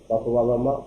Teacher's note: पप बाबा मा ओष्ठ है। पप बाबा मा बोलने में ओष्ठ का उपयोग करते हैं